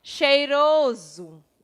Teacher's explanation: Geralmente, quando eu digo, ó, cheiroso, nós escrevemos com S, mas quando a gente pronuncia, o S ele fica entre duas vogais e ele tem um som de Z, o som sonoro